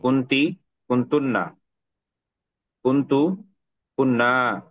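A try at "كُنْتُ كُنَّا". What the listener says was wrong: Very good, মাশাআল্লাহ।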